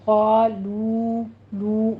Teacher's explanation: گے، الف یا کے پر ہو جائے گا، طا لو لو، واو مدہ کھینچیے، ٹو کاؤنٹ کرنے ہیں ہونٹوں کو گول کرتے ہوئے